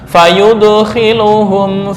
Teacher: Jika mengikuti harakat sebelumnya, seolah-olah dal condong ke arah dommah.